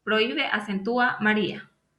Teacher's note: lo tienen porque son y datos de vocal la abierta cerrada donde la vocal cerrada es la que lleva la fuerza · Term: hiato